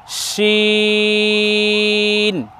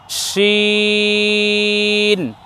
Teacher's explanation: এই বর্ণ উচ্চারণ করার সময় যেন ঠোঁট গোল না হয়